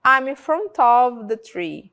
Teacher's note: eu tô falando off mas quando a gente fala a palavra fica como se fosse um som de v